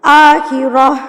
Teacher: گول تا پہ آپ وقف کر رہے ہیں، تو گول تا پہ جب وقف کیا جاتا ہے تو یہ گول ہا بن جاتی ہے، یعنی کہ ہائے ساکنہ میں تبدیل ہو جاتی ہے.